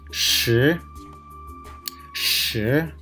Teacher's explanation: there is rising tone, second tone